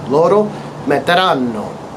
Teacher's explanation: Pay attention to that emphasis on the double N sound again.